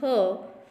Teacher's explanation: when we pronounce this h, our vocal cord do not vibrate. So this h is called a voiceless consonant sound.